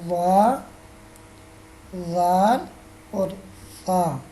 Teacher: زبان کی نوک اوپر سامنے والے 2 دانتوں کے کنارے سے ادا ہوتے ہیں